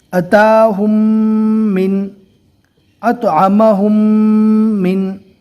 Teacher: میم ساکن کے بعد اگر دوسری میم آ جاتی ہے تو وہاں پر میم ساکن کا ادغام ہوگا۔ ادغام شفوی کے پڑھنے کا طریقہ ہے کہ میم ساکن کو ملا کر گنہ کے ساتھ پڑھنا ہے